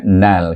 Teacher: Kemudian is idgham syamsi kan huruf nun dengan huruf lam, jadi bunyinya nal, kerana huruf lam itu adalah huruf syamsiah sebab alif lam syamsiah itu ada huruf yang bertasydid iaitu huruf lam.